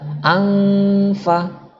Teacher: Lidah kita nggak membentuk nun, tapi langsung masuk ke fa. Lidah kita atau bibir kita langsung masuk ke fa, yaitu bibir bawah bersentuhan dengan gigi atas. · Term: ikhfa hakiki